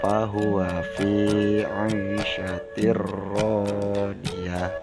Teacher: Karena fathatain bertemu dengan huruf lam, maka tanwin dilebur ke dalam huruf setelahnya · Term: idgham bila guna